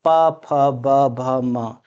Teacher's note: इन पांचों वर्णों का उच्चारण स्थान कहां से होगा? तो निश्चित रूप से ओष्ठ से होगा। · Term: प वर्ग